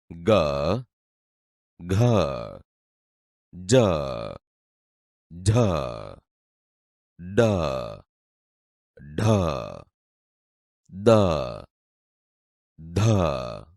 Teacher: નાદતંત્રી સહેજ વધુ કંપનની અવસ્થામાં હોય ત્યારે જે ધ્વનિ ઉત્પન્ન થાય તે ઘોષ ધ્વનિ તરીકે ઓળખાય છે